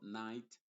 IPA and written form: naɪt (Night)